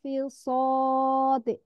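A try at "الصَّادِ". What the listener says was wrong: Fis sadil, bukan fis sadil, bukan fis sadil. Enggak panjang dia, enggak terlalu. Fis sadil, apa hurufnya itu?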